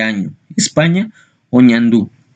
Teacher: La letra ñ representa un fonema nasal palatal de año, España o ñandú.